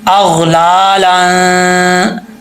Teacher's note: جب یہاں پر نون لام کے اوپر دو زبر ہیں، یہاں غنہ ہوگا، ٹھیک ہے، حروف اخفا کا، تو یہاں پر الف جو ہے وہ گر جائے گا، الف نہیں پڑھا جائے گا. اغلا لن، ایک الف کی مقدار غنہ کریں گے، زیادہ لمبا نہیں کرنا